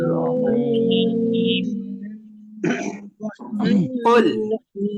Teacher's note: কুল, এই যে কোলটাকে বলবো একদম, আমি বলি কোলটাকে যখন বলবো একদম জিহ্বা গোড়া থেকে বলতে হবে। জিহ্বা গোড়া থেকে যদি না বলেন সেটা কিন্তু কাফ হয়ে যাবে, আর যদি কাফ হয়ে যায় তাহলে কুল উচ্চারণ হবে, আর এই কুল উচ্চারণের অর্থ হয়ে যায় তুমি খাও।